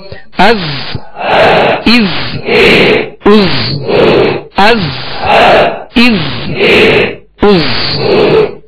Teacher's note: اس میں سیٹی کی آواز ہوگی، زا کو سختی سے ادا کر رہے ہیں، سیٹی کی آواز ہوگی.